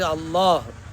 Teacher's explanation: അല്ലാഹ് എന്നത് അള്ളാഹ് എന്ന് തഫ്കീമാക്കി ഘനപ്പിച്ച് ഉച്ചരിക്കുന്നതാണ് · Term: തഫ്ഖീമാക്കി ഘനപ്പിച്ച്